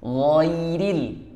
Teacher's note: Gha itu tebal, masuk ke ril itu tipis. Ghairil nah, tebal lagi.